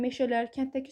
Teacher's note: meşələr kənddəki sözlərində incə saitlərin ahəngi gözlənilib